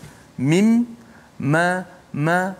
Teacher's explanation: Mim walaupun kita sebut kat bibir, tapi kita tak boleh sebut mim tanpa melalui suara mim kat hidung. Mim, ma, kalau kita tutup hidung tak akan keluar suara huruf mim kalau kita sebut mim. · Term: gunnah